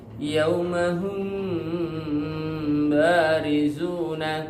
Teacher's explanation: Sedangkan syafawi karena huruf mim dan huruf ba itu makhrajnya asyafatan, yaitu dua bibir. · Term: ikhfa syafawi